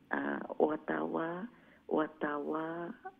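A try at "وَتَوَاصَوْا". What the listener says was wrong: ওয়াতা ওয়া ও ওয়া এখালিফ লম্বা করবা, বুঝছেন নি?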